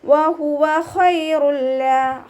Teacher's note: ഖ ഇസ്തിഅലാൻ്റെ ലെറ്ററാണ്. നാവിൻ്റെ ബാക്ക് മുകളിലേക്ക് ഉയർത്തിയിട്ട് തഫ്ഹീം ചെയ്യുക